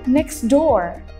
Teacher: Ketika mereka digabung, next door. Jadi suara t-nya itu kalah dengan suara door-nya. So, di sini dihilangkan. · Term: elision